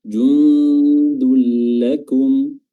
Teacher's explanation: Di sini hukumnya adalah idgham bila gunnah, memasukkan tanwinnya langsung ke huruf lam tanpa disertai dengan gunnah, tanpa disertai dengan dengung. Jundul lakum ya, langsung aja tanpa ditahan-tahan.